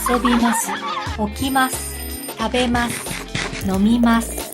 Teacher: Conjugated verbs that end with mas have the accent on ma.